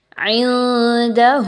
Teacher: نون ساکن کی آواز کو واضح نہیں پڑھنا، اخفا کرنا ہے۔ اخفا کیا ہوگا کہ آواز کو چھپانا ہے نون ساکن کی ود غنہ۔